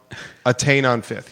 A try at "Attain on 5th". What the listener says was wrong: it sounds like you're saying something else. Attained on 5th?